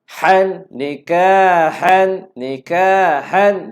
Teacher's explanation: Nikahan hatta tanwin bertemu dengan ha. Tiada dengun. Jelaskan saja bunyi tanwin. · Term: izhar